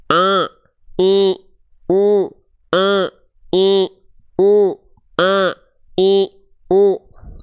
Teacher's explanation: Suaranya masuk ke dalam rongga hidung sehingga sengau suaranya. Itu salah, tapi salahnya bukan salah yang besar, tapi kesalahan yang kecil.